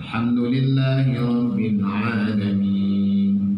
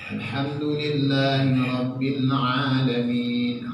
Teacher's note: Ha itu di tengah tenggorokan. Huruf tenggorokan di tengah.